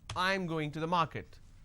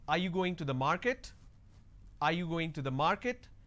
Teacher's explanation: your statement has to be flat, and when it's a question, the last word has to be a rising tone.